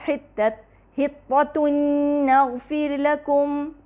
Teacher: حطۃ نغفر لکم، یعنی جو ضمتین کے ساتھ جو تنوین کا جو نون کی آواز تھی وہ مکمل طور پہ غائب ہو گئی، جو ہمیں نون کی آواز سنائی دے رہی ہے وہ نغفر لکم کے نون کی ہے، اور جو غنہ سنائی دے رہا ہے وہ بھی اسی کا ہے · ضمتین ہیں جو کہ ڈائریکٹلی اگلے نون سے مل رہے ہیں، نغفر لکم کے نون متحرکہ سے، تو یہاں پر کیا بن جائے گا؟ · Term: ادغام